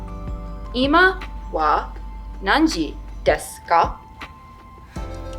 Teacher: question particle kah with rising intonation to make it a complete question